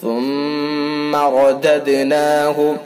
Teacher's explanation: را کو پر کر کے پڑھیں گے، دال کے اندر قلقلہ کیا جائے گا، قلقلہ۔ ثم رددناہ اسفل سافلین، إلا الذين آمنوا وعملوا الصالحات فلهم أجر غير ممنون۔